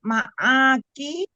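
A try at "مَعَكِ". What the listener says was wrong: Ya, ma'aki, nggak panjang umi, ma'aki.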